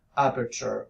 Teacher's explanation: you get aperture with no aspiration at all